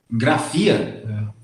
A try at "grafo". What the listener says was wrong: Não, mas não tem FIA no final, tem? É grafo.